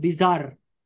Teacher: bis is not stressed, zar is stressed.